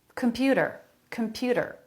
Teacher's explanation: they're all saying that with a flap comput a flap instead of a t sound